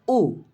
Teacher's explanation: उ आप बोलेंगे तो पीछे वाला जीभ का हिस्सा होगा जो थोड़ा सा ऊपर उठेगा भैया, तो इसी को तो हम पश्च स्वर कहते हैं।